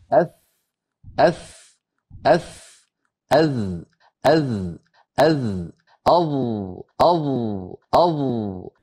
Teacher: زبان کا سرا جب اوپر والے سامنے کے دو دانتوں یعنی ثنایا علیہ کے ساتھ ٹکرائے گا تو یہاں سے یہ تین حرف ادا ہوتے ہیں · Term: مخرج